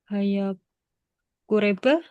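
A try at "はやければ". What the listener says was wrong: Haya bukan kureba, tapi kereba. kureba itu untuk kimas aja ya. Hai, kimas baru kureba. Tapi kalau untuk kata sifat is, soreba pakainya kereba.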